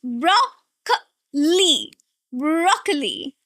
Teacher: 3 syllables, and the stress here is on the first one.